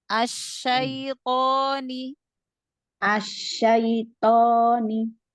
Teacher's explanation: tafasinya tampakkan pada huruf syinnya